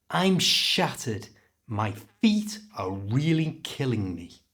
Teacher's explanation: can you hear how the important words shattered killing and feet are being pronounced really clearly